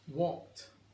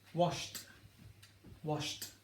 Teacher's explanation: you're not really voicing that last sound or you're not voicing it very much